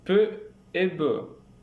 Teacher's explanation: vous avez un blocage de l'air au niveau des lèvre puis une libération brutale · le voile du palais est relevé bien sûr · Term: bilabial, seclusif bilabial